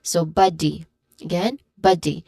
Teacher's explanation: First syllable is ba, which is a stressed syllable. It uses a short sound.